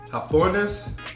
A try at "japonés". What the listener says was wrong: You think you pronounce the J in Spanish? Japonés. Japonés.